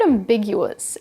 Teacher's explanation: the stress is on the second syllable big which you can remember since something that's ambiguous can lead